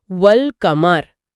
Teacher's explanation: लाम की आवाज जुबान की नोक के तालू से लगने से निकलती है।